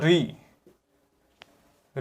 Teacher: तो आपका री जो वर्ण है आपका मूर्धा से उच्चारण होता है